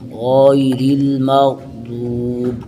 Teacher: غیر را بری کے حالانکہ پہلے را ہم نے پر پڑھی ہے، اس لیے یہ اس را پر کسرہ ہے، زیر ہے، اس لیے اس کو باریک پڑھیں گے